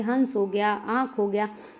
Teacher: इनका उच्चारण अनुस्वार की अपेक्षा हल्का होता है। हवा, नाक और मुंह दोनों से निकलती है। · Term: अनुनासिक